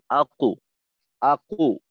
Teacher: একটু কো ওকার মুখী হয়ে যায়